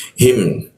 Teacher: hi ditenggorkan bagian bawah huruf hi